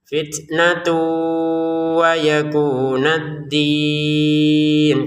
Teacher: tanwinnya bertemu wau dimasukin ya dengan dengungan